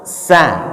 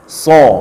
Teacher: Cuman bedanya kalau sin tipis, kalau shad itu tebal.